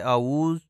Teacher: اعوذ، یہاں پہ اس لفظ کی ادائیگی میں دو غلطیاں کی جاتی ہیں۔ عین کو حمزہ ادا کیا جاتا ہے اعوذ، اور ذا کو زے پڑھا جاتا ہے اعوذ، جو کہ درست نہیں ہے، اور درست ادائیگی اعوذ ہے۔